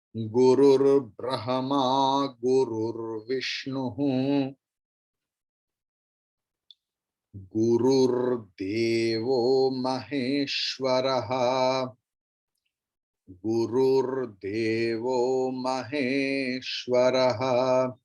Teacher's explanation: Visarga drops, and in between, in place of Visarga, there is Okara.